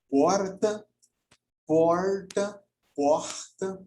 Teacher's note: Porta com ou sem o chamado R caipira